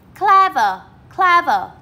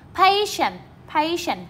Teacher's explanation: đây là hai tính từ có hai âm tiết thì trọng âm sẽ rơi vào âm số 1